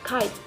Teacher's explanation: memblokir aliran dengan bagian belakang lidah menyentuh langit-langit lunak seperti kite.